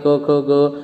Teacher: कवर्ग जो यानी कंठ को स्पर्श करने वाले